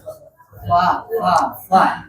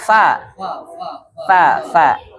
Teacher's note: Ketemu bibir, ketemu gigi atas.